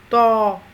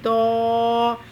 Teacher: زبان کی نوک کو اوپر والے سامنے والے دانتوں کی جڑ کے ساتھ زبان کی نوک کو لگاتے ہوئے اور زبان کے پچھلے حصے کو تالو کی طرف بلند کرتے ہوئے موٹی آواز کے ساتھ ادا کیا جاتا ہے. یہ اس کا مخرج ہوتا ہے تو.